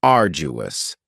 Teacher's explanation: Now, you don't hear that D sound that much. It's not very strong. It almost sounds a little like a J.